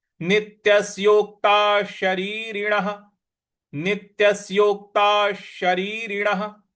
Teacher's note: विसर्ग है उसका उच्चारण हमें श ले आना है क्योंकि उसके आगे श लिखा हुआ है। शरीरण का श लिखा हुआ है। तो पूरा पद आपका बन